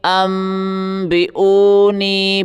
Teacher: نون کی آواز بالکل ختم ہو جائے گی، اس کی جگہ میم کی آواز نکلے گی۔ یہ آواز ناک سے غنّے کے ساتھ ادا ہوگی۔ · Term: इक़लाब